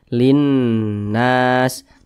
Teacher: huruf Syamsiyah seperti itu makanya huruf lamnya yang ini nih Ini huruf lam nih tidak dibaca langsung masuk ke huruf nun Linnas kemudian nah ini dibaca didengungkan nah perhatikan di samping huruf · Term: alif lam syamsiyah